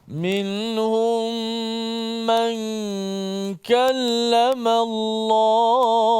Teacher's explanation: Dua mim bertemu, satu mati, satu hidup. Maka kena gabungkan bacaan jadi satu mim. Maksudnya mim pertama itu digabungkan ataupun dimasukkan ke dalam mim yang kedua. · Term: idgham mislain